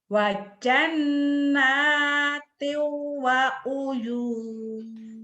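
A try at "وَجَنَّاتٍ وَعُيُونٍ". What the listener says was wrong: Jangan ditahan. Wa jannatiu wa uyun gitu. Enggak ditahan di situnya ya.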